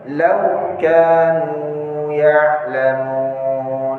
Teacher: Jadi lau itu layyin, enggak boleh panjang bacanya.